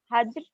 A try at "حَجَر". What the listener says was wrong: حجر نہیں، حجر نہیں، حجر. جیم کا فتحہ ہے، جیم پر فتحہ پڑیں گے. حجر، جی.